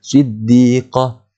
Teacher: Bila kita berhenti kat ta marbutah tu, dia akan jadi bunyi dia ha.